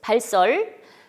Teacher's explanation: 리을로 끝났고 뒤에 스가 와서 쌍시옷인 발사 됐습니다